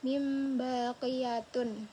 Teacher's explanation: Iqlab ini adalah nun sukun atau tanwin yang bertemu dengan huruf ba. Jadi, nun mati dan tanwin ini dibacanya bukan nun dan tanwin gitu guys, langsung jadi mim gitu, berubah. Tapi cuman suaranya aja, bukan tulisannya.